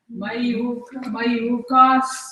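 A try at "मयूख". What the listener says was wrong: Mayukha. Hard answer. Kha. Mayukha. Mayukha. Ka. Ka. The hard ka. Ka. So all those with vernacular script, non-Sanskrit script, you will have this problem.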